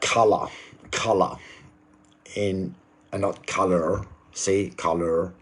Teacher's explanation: I dropped that R sound okay because it's non-rotic English and I don't pronounce the r at the end of the words